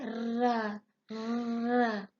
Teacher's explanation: कम प्रकंपित, इस ध्वनि में उच्चारण में जीभ की नोक मसूड़े के पास आती है और अंदर से आती हवा के प्रवाह के कारण वह 2-4 बार कंपन करती है